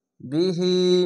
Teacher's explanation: খাড় জেরে এক আলিফ টেনে পড়বেন